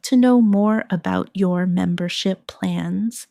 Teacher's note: Notice the stress on membership so it's clear what you're asking about.